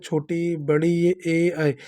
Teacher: अग्रस्वर हैं, क्योंकि जब हम बोलते हैं तो ये हमारे जीभ के सबसे आगे वाले भाग से उच्चारित होते हैं